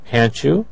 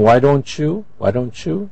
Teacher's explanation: the sound ch is really a t and a y together